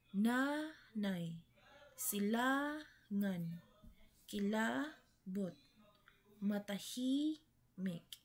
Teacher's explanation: madali itong matukoy dahil sa pagkakaroon ng natural na banayad na diin sa ikalawang pantig mula sa dulo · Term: malumay